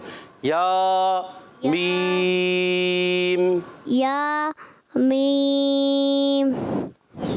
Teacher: ایک الف کھینچنا ہے، جھٹکا نہیں دینا۔